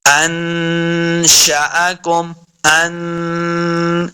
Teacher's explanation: نون ساکن کے بعد شین حروف اخفاء سے ہے تو یہاں پہ اخفاء کا قاعدہ ہے، غنہ کرنا ہے۔